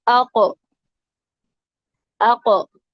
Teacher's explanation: अक्सा लिसान बिल मुकाबिल اوپر کا تالو، یہ ہے قوف کا مخرج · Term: कौफ का मखरज